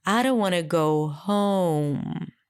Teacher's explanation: the main difference that emerges from this is that in English home was higher in Pitch